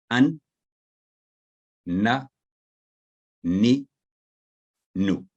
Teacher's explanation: जबान की नोक का ऊपर वाला हिस्सा मसूड़ों के करीब ऊपर तालू के सख्त हिस्सा पर लगाने से अदा होता है।